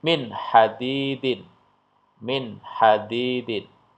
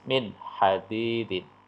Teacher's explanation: nun sukun ketemu dengan ha tidak boleh dibaca mendengung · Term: Idhar halq